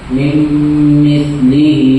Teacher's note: تختی نمبر 20 اس کا جواب من مثله نون ساکن کے بعد یوہی کے 4 حرفوں میں سے میم آیا ہے اس لیے ادغام ناقص ہوگا. نون ساکن کی آواز کو بعد والے حرف سے ملا کر گنہ اور اخفا کے ساتھ پڑھیں گے